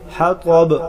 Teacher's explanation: طا حروف مستعلیہ ہے، موٹا پڑھیں گے